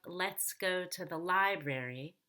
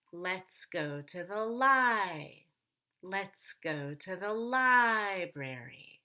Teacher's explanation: Now in the word library, lie is the most important syllable. So we're going to go up on lie and then down on brary. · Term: falling intonation